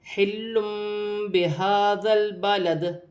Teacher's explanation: اس میں جب بھی 2 پیش کی تنوین کے بعد با ہے تو وہاں چھوٹی سی میم لکھی ہوتی ہے۔ تنوین کی آواز کو میم سے بدل کر غنّے کے ساتھ ادا کیا جائے گا۔ یہاں پر اقلاب کا قاعدہ ہے۔